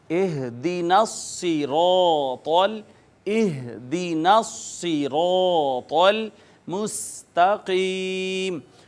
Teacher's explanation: صاد کو پر کر کے پڑھیں گے، موٹا کر کے پڑھیں گے، را کو بھی پر کر کے پڑھیں گے اس وجہ سے کہ اس کے اوپر زبر ہے، اور طا بھی ان حروف میں سے ہے جو پر پڑھے جاتے ہیں۔